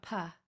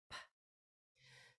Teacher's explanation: And the P has no voice. It's not pa. It's just a puff of air.